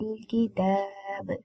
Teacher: ba will be sakin and it will be qalqala when we are doing sakin on ba. It's an qalqala harf, qalqala letter.